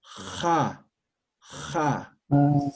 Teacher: En Aymara, más o menos se pronuncia como la J, pero fricativa, raspando.